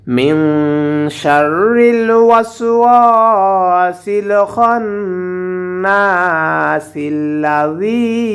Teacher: কিন্তু আমরা এখানে যদি ওয়াকফ করি তাহলে অবশ্যই এখানে আল্লাযী পড়ব, আর ওয়াকফ না করলে সিনটা লামকে ধরে উচ্চারণ করব